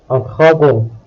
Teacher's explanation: O and N combine to produce a nasal sound.